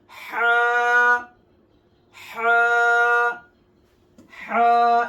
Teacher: এই হরফের উচ্চারণের স্থান হলো হলকের মধ্যখান হইতে।